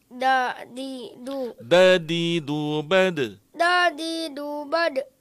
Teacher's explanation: Huruf dal ini adalah dia bersifat syiddah, jadi ditahan dulu.